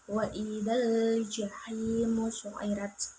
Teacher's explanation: Dan alif lam qamariyah yaitu alif lam bertemu dengan jim dibaca secara jelas